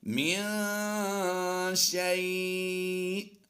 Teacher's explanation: یا لین کے بعد سکون عارضی ہوگا تو مد لین عارض ہوگی